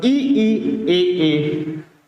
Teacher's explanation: अग्र स्वर जिनको उच्चारण करने में जीभ का अगला हिस्सा का प्रयोग करते हैं, उसे ही कहते हैं अग्र स्वर।